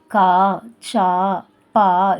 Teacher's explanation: அடுத்தது நெடில் எழுத்துக்கள். நெடில் எழுத்துக்கள் கொஞ்சம் நீண்ட ஓசையுடைய எழுத்துக்கள், அதனால அதுக்கு 2 மாத்திரை.